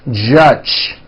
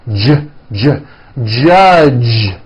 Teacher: the J sound in American English is always voiced